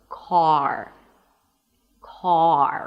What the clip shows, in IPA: kɑːr